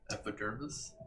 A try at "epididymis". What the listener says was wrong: He confused epidermis with epididymis.